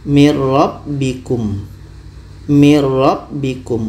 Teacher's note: Bunyi nun tidak ada lagi. Masuk ke ra. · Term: idgham kamil